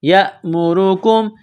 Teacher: حمزہ زبر یا، میم پیش مو، یا مو، را پیش رو، را کے اوپر پیش ہے تو را کو موٹا پڑھنا ہے